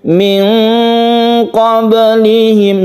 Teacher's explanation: nun mati bertemu dengan qaf, ikhfa hakiki membacanya samar, dan kita membacanya itu ketika membaca nun mati kita bersiap membaca qaf.